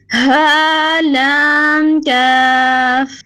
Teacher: سینے کے قریب سے ہا پھر لام اور آخر میں باریک کاف ہے